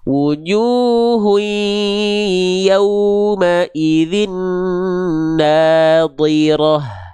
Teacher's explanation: bigunah harus dengung, suaranya masuk hidung sengau ketika hui, jangan enggak hui masuk hidung. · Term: idgham bigunah